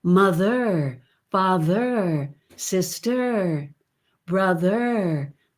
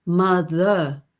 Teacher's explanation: an r that you can hear as a tip coming back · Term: standard american